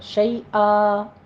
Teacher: کو وقف ابدال کر لیں گے الف مدہ بنا کر، شیئا، بس یہاں پہ مد عوض ہوگی، بہت لمبا نہیں کھینچنا، صرف 2 کاؤنٹ کرنے ہیں